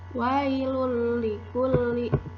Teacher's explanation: Contoh, wailul likulli, tanwin bertemu dengan huruf lam, suara tanwinnya dimasukkan ke dalam huruf lam tanpa dengung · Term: idgham bila gunnah